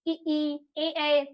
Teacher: हमारे जीभ का अगला भाग जो होता है वो प्रयोग में आता है। अब बोल के देखेंगे, ई, ए, कुछ आप जब साउंड करेंगे तो हमारे जीभ का अगला भाग प्रयोग में आ रहा है, ई, ए। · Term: अग्रस्वर